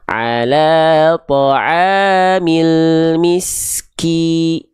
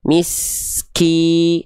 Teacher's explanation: Rendahkan rahang bawah kita, bukan nyengir ya, bukan ki tapi ki, dikebawahin mulutnya, lalu diangkat bagian tengah lidah ketika melafalkan i-nya. Ki, jadi si vokal i-nya jelas, nampak jelas, tidak cuman ki gitu ya.